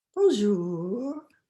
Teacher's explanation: drawing out the second syllable nice and long